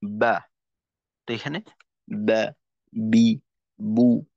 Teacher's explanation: মাখরাজে একটু চাপটা বেশি থাকবে। যে কারণে বাতাস বের হইতে পারবে না। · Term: জাহারের কাজ